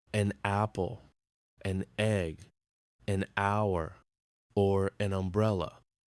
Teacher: Notice that in an hour the H is silent